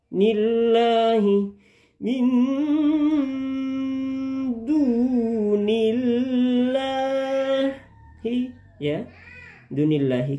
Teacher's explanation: Tarkik lafaz jalalah ini adalah tarkik. Tarkik artinya dibaca tipis ya.